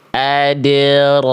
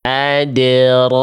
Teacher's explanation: Jadi cukup dibaca ah. Buka tapi angkat pangkal lidah biar bunyi rnya tebal.